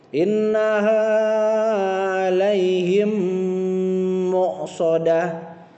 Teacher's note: ada mim sukun bertemu dengan mim harus dipakai hukum idgham miminya, yaitu ditahan sebanyak 3 harokat